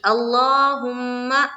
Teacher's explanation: جیسے کہ یہاں دیکھیے اللہم، میم کے اوپر شد ہے تو اس کا غور کرنا ہے اس پر کہ میم کے اوپر شد ہے تو وہاں پر تھوڑی دیر لگانی ہے